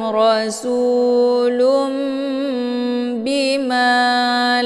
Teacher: tanwinnya dibalikkan ke dalam bunyi mim sukun. Jadi yang dibaca di sini adalah mim sukun ketemu ba. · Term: iqlab